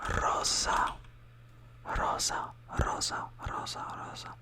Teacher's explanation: Like rosa is just like a quick roll of the R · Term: roll your R